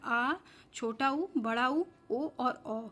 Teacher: और जो तीसरा है पश्च स्वर, ये जीभ के पिछले हिस्से से इसका उच्चारण किया जाता है